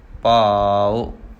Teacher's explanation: ਭੱਬੇ ਨੂੰ ਕੰਨਾ ਥੋੜ੍ਹਾ ਜਿਹਾ ਲੰਬਾ ਕਰਕੇ ਊੜੇ ਨੂੰ ਔਂਕੜ ਛੋਟਾ ਰੱਖਣਾ ਹੈ।